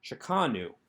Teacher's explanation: you hear the accent on the second syllable